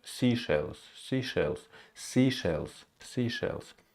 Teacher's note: that first syllable is stressed